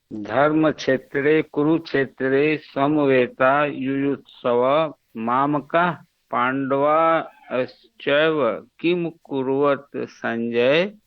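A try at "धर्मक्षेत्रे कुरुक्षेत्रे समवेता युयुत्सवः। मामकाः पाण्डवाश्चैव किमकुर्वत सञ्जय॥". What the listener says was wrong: हाँ उत्तमम संजय।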